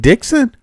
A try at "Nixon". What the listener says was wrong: No, you said Dixon, but Nixon. Nixon.